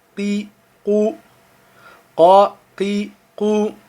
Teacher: Le QF, vous allez voir, il vient du fond de la gorge.